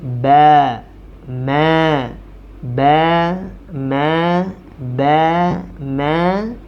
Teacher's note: dibaca dengan menutup kedua bibir dan membukanya